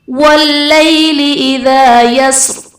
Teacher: یا ساکن سے پہلے حرف پر زبر ہے، یہاں پر یا لین کا قاعدہ ہے، اس لیے اسے ہم بغیر کھینچے بغیر جھٹکا دیے نرمی سے معروف پڑھیں گے